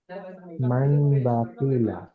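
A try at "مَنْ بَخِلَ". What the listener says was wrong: মান নেয়, মাম, নুনের জায়গায় মিম হবে, পরিবর্তন হয়ে যাবে, মাম বাখিলা।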